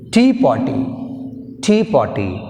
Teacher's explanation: టీ పార్టీ we have stress on first syllable. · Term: stress on first syllable